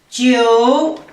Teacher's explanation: Тоғыз дегенді жеу, үшінші тонмен.